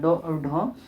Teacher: इसे हथौड़ा व्यंजन भी कहा जाता है क्योंकि जैसे आप बोलिएगा ड और ढ तो ऊपर दो बार टकराएगा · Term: उत्क्षिप्त